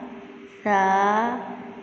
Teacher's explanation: ثا پہ آپ نے زیادہ پریکٹس کرنی ہے، اس میں سٹی کی آواز نہ آئے